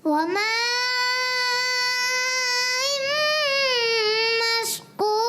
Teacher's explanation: با کے ساتھ کلکلا کرنا ہے مگر ہا کی آواز نہ آئے. اس چیز کا بھی خاص خیال رکھنا ہے.